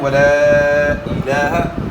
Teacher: تو جب بھی حروف مدہ کے بعد حمزہ آ جائے، حروف مدہ کے بعد حمزہ آنے کے بعد جو ہے نا مقدار مد کی جو ہے نا وہ 3 سے 4 الف ہو جاتی ہے. تو یہاں 3 سے 4 الف مقدار کے برابر آپ نے یہاں مد کرنا ہے